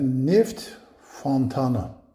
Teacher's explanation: sonuncu samit T tələffüz edilmir